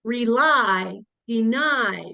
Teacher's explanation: We have a couple of two-syllable words, rely, deny. Do you hear how that's accented in the second syllable? So occasionally, very occasionally, a Y still says I in a two-syllable word.